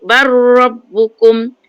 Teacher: Lam itu dimasukkan, diidghamkan. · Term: Idgham mutaqaribain